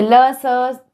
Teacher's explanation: ओंठ से आप बोलो उ प फ, आपको पता लग रहा है आपके होंठ हिल रहा है। दांत से ल स, सब में दांत आपके स्पर्श हो रहे हैं।